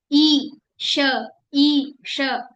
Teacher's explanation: जैसे आप जहां से ई बोलते हैं वहां से आपको ये वाला श बोलना है। ई, श, ई, श, वहीं से बोलना है।